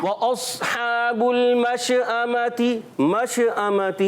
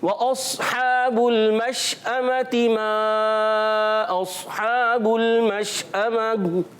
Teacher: مش اما میں شین کی ادائیگی کلیئر کرنی ہے اور شین کو بھی ہلانا نہیں. اچھا بعض بچے مش اما بھی پڑھتے ہیں, کیسے پڑھتے ہیں, شین میں کلکلا کر دیتے ہیں.